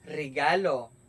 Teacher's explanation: Ang ibabaw ng dulong dila ay lumalapit o dumidiit sa punong gilagid. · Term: panggilagid